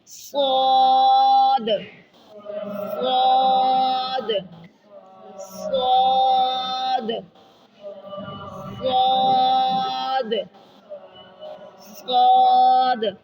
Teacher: مخرج کو غور سے دیکھ رہے ہیں، اوپر والے دو دانتوں نیچے والے دو دانتوں کے کنارے سے زبان کو لگاتے ہوئے، زبان کی نوک کو لگاتے ہوئے ادا کرنا ہے اور موٹا اس کو اوپر کو اٹھانا ہے. موٹا کر کے پر کر کے پڑھنا، لپس گول بھی نہیں ہونے دینے.